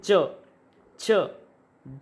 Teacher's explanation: इनके उच्चारण में जो है घर्षण पैदा हो रहा है, संघर्ष पैदा हो रहा है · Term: स्पर्श संघर्षी